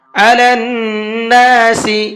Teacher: نون کے اوپر تشدید ہے تو یہاں پر غنہ کریں گے